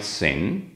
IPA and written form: sɪn (sin)